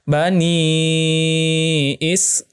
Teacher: Di sini ada huruf mad ya yang sebelumnya berharokah kasroh dan setelahnya ada huruf hamzah dalam beda kata. Ya, maka hukumnya mad jaiz munfasil. Bacanya 4 harokah.